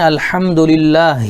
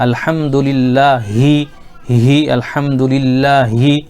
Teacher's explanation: یہاں پہ چھوٹی ہا آئی، یہ شروع حلق سے، تو ہمیں یہ غور کرنا ہے الحمدللہ، یہ ہماری چھوٹی ہا ادا ہو رہی نہیں ہو رہی ہے۔